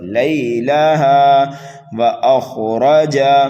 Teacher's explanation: خا کو پر پڑھنا ہے، را کو بھی پر پڑھنا ہے، جیم متحرک ہے، اس جیم کو بھی جلدی پڑھنا ہے۔